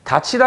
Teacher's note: 그런데 앞의 사례랑 똑같이 티읕 뒤에 이 모음이 나오기 때문에 이것도 치읒으로 바뀌는 구개음화 현상이 생긴다